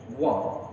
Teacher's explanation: तो व का उच्चारण स्थान है दंतोष्ठ, व, दंतोष्ठ, ठीक है।